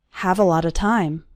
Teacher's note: all of those little words a lot of run together into a lotta so it sounds like this have a lot of time let's